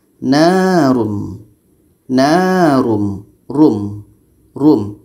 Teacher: ro tanwin depan dibaca tebal narum Num Rum Rum kita baca tebal ini bentuk kedua ro